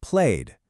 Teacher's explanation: You can hear that softer kind of humming d sound that just carries through to the end. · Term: voiced d sound